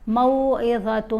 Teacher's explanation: تم رکے نا ایک الف جتنا، آواز ناک میں گئی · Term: غنہ